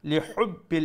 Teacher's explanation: Make sure you pronounce the ha from the middle of the throat.